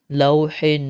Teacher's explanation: واؤلین کے بعد یہ حا جو ہے وہ ساکن ہو رہا ہے، ٹھیک ہے؟ تو یہاں پر ہم 2 الف کے مقدار کھینچ کر پڑھیں گے۔